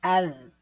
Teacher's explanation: اب ذال پر زا طرح کی آواز نہیں آنی چاہیے